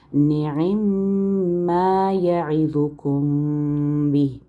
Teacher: میم اور با کے درمیان اخفا شفوی آپ نے غنہ کرنا ہے